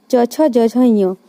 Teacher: जीभ जो है सो तालू में सटती है, मुड़ के नहीं सटती है, डायरेक्ट तालू में सटती है, तो इसीलिए इसे तालव्य कहते हैं।